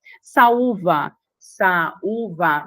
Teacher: Você tem o Uí tônico, u forte que forma iato com a vogal anterior, com o a, formando iato